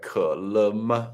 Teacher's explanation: so le is slightly lower, ma is higher